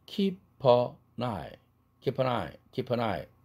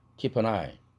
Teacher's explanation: p와 n 사운드가 다 링킹 되죠